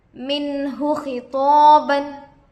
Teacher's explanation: نون ساکن کے بعد حروف حلقی سے ہا آ کر ہے، اس لیے نون کو ظاہر کر کے بغیر گنہ کے جلد پڑھیں گے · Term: اظہار